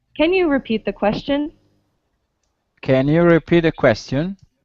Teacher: your intonation is going up